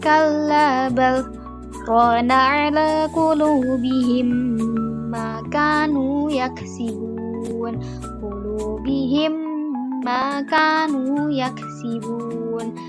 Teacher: ada dengung 2-3 harokat dengan peleburan antara yang mim sukun dengan mim harokat mim selanjutnya